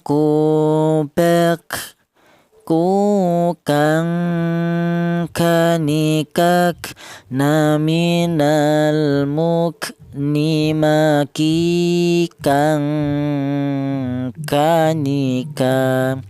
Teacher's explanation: Huruf kaf ini keluarnya huruf berasal dari pangkal lidah ya. Pangkal lidah itu lidah bagian belakang ya.